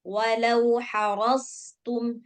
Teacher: Kalau dia tipis, dia jadinya sin. Ini sod, tebalin.